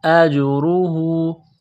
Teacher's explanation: مد ہے، اس کو تھوڑا سا کھینچنا ہے، محسن فلہ اجرہ، حمزہ کو جیم کے ساتھ پلس کرنا ہے، جیم ساکن ہے تو یہاں پر قلقلہ کریں گے ، را کے اوپر پیش ہے، را کو موٹا کرنا ہے،